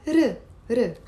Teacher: the difference is that in Arabic, we roll the R